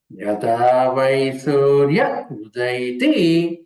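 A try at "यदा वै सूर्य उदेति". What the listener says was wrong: ఉదైతి లేదండి ఉదేతి యదా వై సూర్య ఉదేతి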